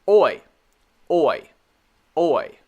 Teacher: When you say oi, your mouth starts as a circle, o, and then goes to a Y sound.